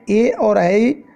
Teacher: कंठ और तालु के बीच में ए और ऐ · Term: कंठ तालव्य वर्ण